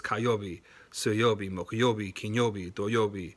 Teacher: that yobe part is kind of a pitch accent kind of rising